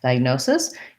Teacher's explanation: diagnosis stress is on the no we have the uh letter i says its name i die